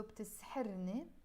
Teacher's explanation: the ni, which we pronounce as more ne in Lebanese when I'm speaking in real life